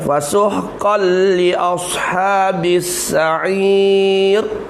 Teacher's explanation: Fasuhqal, qal tanwin jumpa dengan lam, idgham bilah, gunnah, idgham kamil, masuk habis. Fasuhqal, jangan fasuhqan, tak bunyi kan lagi dah.